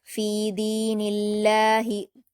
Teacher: नून पर जेर की हरकत है लफ्ज अल्लाह से पहले तो इसलिए लफ्ज अल्लाह के लाम को बारीक पढ़ा जाएगा। फी दीनिल्लाहि, ठीक है।